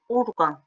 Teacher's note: Orqan sözü vurğu əvvələ düşür